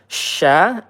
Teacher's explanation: Ansyarah, sya, hati-hati ya. Sya ini at-tafashi, dia ada menyebar udara di dalam mulut.